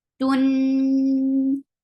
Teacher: For dhamma, circle your lips on ta, but as soon you will touch noon, your lips should be in a straight position. Tun. This should be that long gunna because this is akmal gunna.